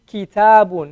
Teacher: You elongate the ta